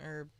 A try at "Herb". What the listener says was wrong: I don't think you pronounced the H